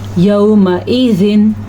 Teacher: नून तनवीन के बाद हमज़ा आया हुआ है तो इसलिए इसको ज़ाहिर करके पढ़ा है